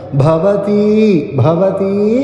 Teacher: ഭ മഹാപുരാണാക്ഷരമാണ് പവർഗ വരുന്ന ഘോഷാക്ഷരം അത് ബലം കൊടുത്തു ഉച്ചരിക്കുക ഭവതി ഭവതീ എന്ന് ദീർഘമായിട്ട് ആ എന്ന് നീട്ടണം ഭവതീത്യനുശുഷരുമ ഭവതീത്യ അത്യ അല്പം